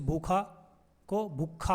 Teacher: खरी बोली में महाप्राण से पूर्व अल्प प्राण का आगम होता है, जैसे भूखा को भूखा बोलते हैं, ये तो सही है।